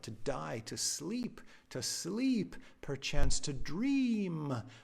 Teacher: those eee sounds that's assonance